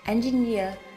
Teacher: engineer, trọng âm rơi vào âm thứ ba